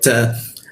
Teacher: huruf ta, maka ujung lidah tempelkan ke gigi, ada sedikit desis ya